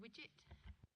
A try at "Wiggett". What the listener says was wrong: Wiggett. It's a double G. Wiggett. Yeah, it's a double G, which is a hard G.